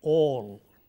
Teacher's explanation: Take for example the word A-L-L, all. The vowel here is a rounded vowel, it's a long vowel, so all. If you don't round your lips for this, you end up saying all.